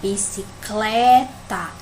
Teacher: é o clé, né, que é mais forte